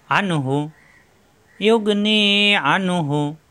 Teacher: ইয়োগ নি আইন যাবার কণ্ঠনালীতে চাপ হবে, আ মিলবে নুনের সাথে, নুন সাকিনের পরে আসছে হা, ইজার হবে স্পষ্ট হবে গুণ্য হবে না